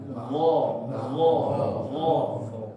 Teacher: Kalau sedangkan mo itu tebal. Mo. Dan dia vokalnya lebih ke o, ya, karena tebal